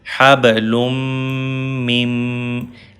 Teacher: This mim directly connect to this mim. Noon will skip. Mim has shadda sign and shadda's letters need that previous letter which has fatha kasra dhamma. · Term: idgham